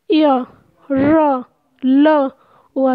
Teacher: इसमें हमारा जो मुंह है उसका आकार थोड़ा छोटा होता है और वायु बीच से निकल रही है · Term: अंतःस्थ व्यंजन